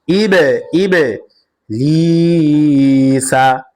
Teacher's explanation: বা কলকলা হরফ, প্রতিদিন আওয়াজ দিয়ে পড়তে হবে, ধাক্কা দিয়ে পড়তে হবে।